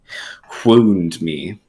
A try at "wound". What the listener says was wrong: It's almost like you're saying woo, but then you're saying wound.